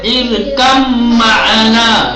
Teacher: ادغام کے ساتھ، یعنی با کو حذف کر دیں گے اور میم کو تشدید دیں گے